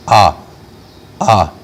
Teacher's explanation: اگر اس کو ہم روک لیں ذرا سا اقصائے حلق میں، اسی ہوا کو روک لیں تو الف ادا ہوتا ہے